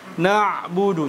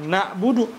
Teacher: huruf Ain kita berikan makhrajnya yaitu dia di tengah tenggorokan · Kita berikan makhrajnya, yaitu dia di tengah tenggorokan. Kemudian huruf ain pun dia adalah ya sifatnya adalah tawassut ya, sehingga kita pun mengalirkan suara ketika kita matikan. · tawasud ya sehingga kita pun mengalirkan suara ketika kita matikan na'budu Jadi bukan nabudu nanti jadi berubah yang awalnya jadi Ain menjadi apa menjadi Hamzah